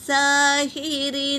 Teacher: سین پر کھڑا زبر ہے تو اسے ایک الف کی مقدار کھینچیں گے